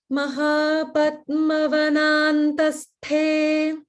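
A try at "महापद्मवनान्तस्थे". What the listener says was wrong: Good. And the te is Maha prana.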